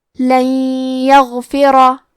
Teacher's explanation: یا حروف الادغام بغنہ میں سے ہے تو ہم یہ حکم کو غنہ اور تشدید کے ساتھ ادا کریں گے